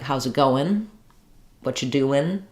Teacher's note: That is a casual speech thing that we do, changing the NG to an N and dropping, changing that sound.